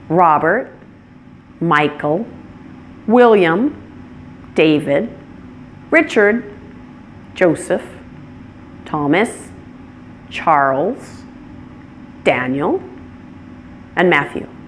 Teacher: And where did you hear the primary stress on each of these? On the first syllable, correct?